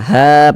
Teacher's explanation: atau baris fathah ada huruf alif sebelumnya ada harakat fathah maka huruf yang memiliki harakat fathah dibaca panjang sehingganya ha kita baca panjang